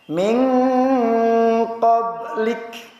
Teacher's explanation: Sama diakhiri dengan kaf. Nah, kaf ini bukan qalqalah, jangan sampai pantul. Tapi mesti kita nyatakan sifat hamsnya.